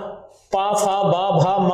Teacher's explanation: तो आप देखेंगे आपके होठ लगातार भिड़ रहे होंगे